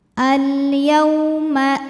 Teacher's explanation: waw sukun yang sebelumnya baris fathah, maka dibacanya lembut